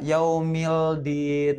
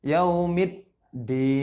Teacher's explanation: Karena ada alif lam ya bertemu dengan salah satu huruf syamsiyah, yaitu huruf dal. Jadi harus ditasydid, dimasukkan ke huruf selanjutnya. Jadi alif lamnya tidak terbaca. Salah kalau misalnya kita baca yaumildin. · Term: Idgham syamsiyah